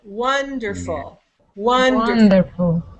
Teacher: So you hear that there are three syllables, wonderful, and you can hear that the first one is higher, longer, and louder. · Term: syllable stress